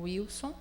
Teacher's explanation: se você tem uma palavra como Wilson, você percebe que o W tem um som de U